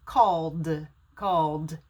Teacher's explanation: when i put the ed on the end it's called called i make a d sound not a t sound called called so l is a voiced consonant l or o